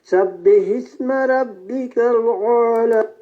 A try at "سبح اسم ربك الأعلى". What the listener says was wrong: آپ نے کہا سبح اسم ربک الاعلی، اعلی نہیں، اعلی. یعنی حمزہ الگ ہے اور عین الگ ہے، دونوں کا مخرج الگ الگ ہے. سبح اسم ربک الاعلی، اعلی، دونوں الگ الگ. سبح اسم ربک الاعلی، اعلی، اعلی بھی نہیں اور اعلی بھی نہیں، اعلی، اعلی.